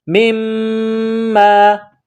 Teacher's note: رج یخرج لنا مما میم کو میم کے ساتھ ملانا ہے، میم کے اوپر تشدید ہے تو یہاں غنہ کرنا ہے، آواز ناک میں چھپائیں گے